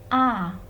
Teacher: rahangnya berada di bawah dalam hal ini mulutnya lebih terbuka